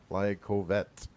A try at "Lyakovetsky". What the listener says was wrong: It's only half of my last name, so you managed this far, but we're going to practice for weeks.